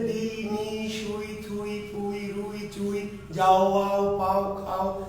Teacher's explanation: দুটো স্বর যখন একই সাথে উচ্চারিত হয় তখন এই ধরনের উচ্চারণকে বলা হয় যৌগিক স্বরধ্বনি